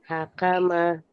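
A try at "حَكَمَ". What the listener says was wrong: Ha. Jelaskan lagi hanya ha. Ha.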